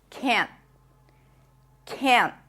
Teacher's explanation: expect to hear that nasal sound can't when you hear the negative form. Also, when you hear the pure vowel, it is more likely that it's the negative form rather than the positive form because this is usually reduced. · it's just a little more nasal and the N stops abruptly